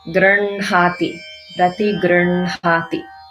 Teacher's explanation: So here, this is one of those words where even though the H comes first and is followed by a nasal sound, you pronounce the nasal first and then the H, just like Brahma, Vanhi